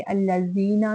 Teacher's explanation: زی پہ یائے مدہ ہے 2 حرکت لمبا کریں گے